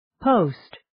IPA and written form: poʊst (Post)